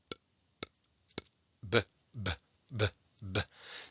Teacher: You're putting your lips together and you are releasing the hold of the lips. You're almost blowing something out.